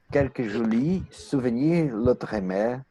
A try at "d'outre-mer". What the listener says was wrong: Mais ce n'est pas l'autre, c'est de autre mer. D'autres mers.